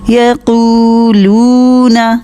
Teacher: قو اور لو دونوں کو 2 حرکت لمبا کرنا ہے، لیکن نون کے اوپر صرف زبر ہے، اس کو لمبا نہیں کرنا. یقولون یقولون پورا 2 حرکت لمبا کیجئے، ہونٹوں کو پورا گول کیجئے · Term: واو مد